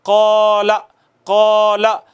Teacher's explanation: مثال کے طور پر ہے قال، قال میں یہ جو الف ہے اس کو ہم نے کھینچا ہے نا اتنا، 2 حرکات کے برابر کھینچا ہے نا، ایک الف جتنا کھینچا ہے اس کو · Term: مد اصلی